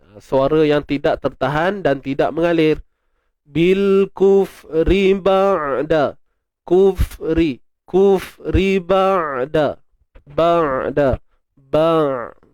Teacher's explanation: Huruf ain kita kena baca dengan menzahirkan sifat tawassut. Apa tawassut ni? Suara yang tidak tertahan dan tidak mengalir.